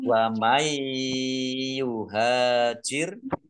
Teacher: nun sukun bertemu dengan huruf ya. Bacaan idgham bi gunnah, masuk dengan mendengung, yaitu mendengung ya ditandai yaknya ada tasdidnya, ditahan kira-kira 2 harokat agar tampak dengungannya.